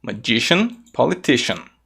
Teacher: Essa terminação cian não é pronunciada como cian, e sim como shan.